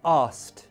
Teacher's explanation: The skt in asked, you may elide the k